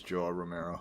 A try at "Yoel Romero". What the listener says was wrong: It's not Joel. It's Yoel.